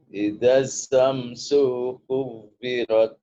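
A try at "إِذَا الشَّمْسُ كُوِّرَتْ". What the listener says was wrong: Sunya kepanjangan, coba pendekin dikit. Idza syamsu kuwirat.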